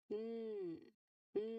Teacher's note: There's air coming out of your nose nose here.